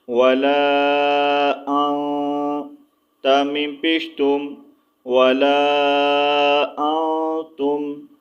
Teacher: اخفا کریں گے، غنہ کریں گے، یعنی کہ ناک سے آواز کو چھپا کر نکالیں گے